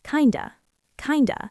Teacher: We do not say kind of like We drop the F sound in of, and we link the D to the schwa sound.